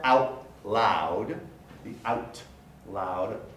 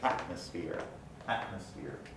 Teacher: i don't pronounce the t it's replaced by a glottal stop